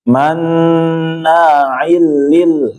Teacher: Idgham bila gunnah. Jadi dia masuk tanpa ditahan.